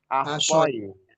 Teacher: Jadi sifat tebalnya, sifat istilahnya kalau dibikin ahsai hilang dia. Sifatnya berubah gitu.